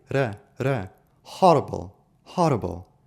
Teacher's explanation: horrible said with a very posh British accent where the R is not silent, but it is articulated lightly. R horrible.